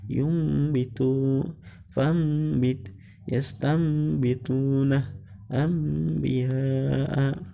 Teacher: Jadi iklab yaitu mengganti huruf nun mati atau tanwin menjadi seperti huruf mim mati. Jadi membacanya ketika ada nun mati atau tanwin bertemu dengan huruf ba, maka dibaca seperti mim